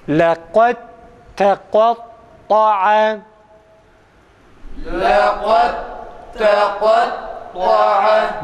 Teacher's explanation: Dalı okumuyoruz. Dalı ta'ya çeviriyoruz. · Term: idgam